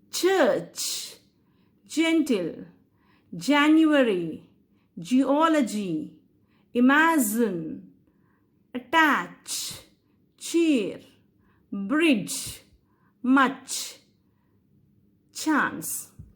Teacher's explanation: you can hear the obstruction and also frictional release that's why i call these both sounds as affricates so these